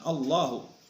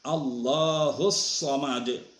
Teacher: Sebelum lafaz Allah harkatnya fathah, maka lafaz Allahnya itu ditebalkan